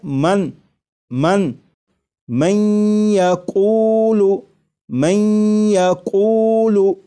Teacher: نون ساکن کو یا میں ادغام اس طرح کریں گے کہ غنہ بھی ہو